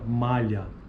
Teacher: a consoante lateral palatal ocorre na fala do poucos falantes do português brasileiro